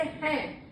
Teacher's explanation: तो इसलिए जैसे हैं, अगर हैं बोल रहे हैं, ऐ की आवाज है, तो ऐ अगर हम मुख का प्रयोग कर रहे हैं, लेकिन जब हैं बोल रहे हैं तो ऐ की आवाज हम नाक का भी सहारा ले रहे हैं, तो नाक से हमारी वो ऐ की आवाज आ रही है, इसलिए उसके साथ हैं, इसलिए उसमें बिंदु का प्रयोग होगा।